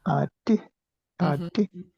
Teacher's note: I can hear that you're making it high tone.